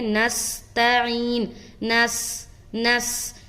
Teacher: تو اب جب ہم اس طرح ادا کر رہے ہیں نستعین، نس نس، جیسے ہی نون سین سے مل رہا ہے تو ہماری آواز جو ابھر کر آ رہی ہے تو گویا یوں معلوم ہو رہا ہے کہ ہم ایک سیٹی نما آواز نکال رہے ہیں